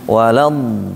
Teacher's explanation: Do-nya jangan cepat naik ke atas. Ditahan dikit karena dia rikhwah. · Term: do rikhwah